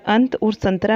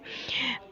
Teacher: इसका सिंबल एक बिंदु के रूप में दिखाया जाता है और सिरोरेखा के ऊपर लगता है। ठीक है, तो अनुस्वार का उच्चारण नाक से किया जाता है